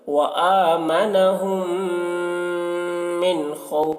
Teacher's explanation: میم مشدد ہے، میم میں غنہ کر رہے ہیں